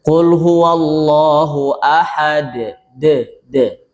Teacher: qalqalahnya berhenti tidak memberi pantulan suara condong harakat fathah yang lemah.